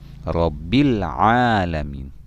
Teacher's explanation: alif lam bertemu dengan salah satu huruf qamariyah yakni Hamzah maka hukum bacaannya dibaca jelas dalam artian huruf lam nya dibaca jelas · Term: alif lam qamariah